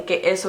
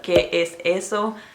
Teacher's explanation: how they cut off the S's in it and they might say que eso instead of que es eso